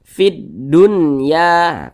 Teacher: Ini huruf nun sukun berjumpa dengan huruf ya dalam satu kata, maka namanya izhar mutlak, bukan idgham bi gunnah. Karena dia izhar maka dibaca jelas, tidak berdengung. Jadi dibaca jelas, huruf nunnya dibaca jelas.